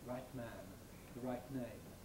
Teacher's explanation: there is the possibility of saying the right man, with an exploded T, usually without nasal release noise